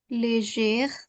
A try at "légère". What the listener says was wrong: Légère. Perfect.